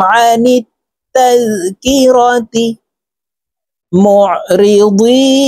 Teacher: এই আইন হরফকে হলকের মধ্যখান থেকে চাপ দিয়ে উচ্চারণ করব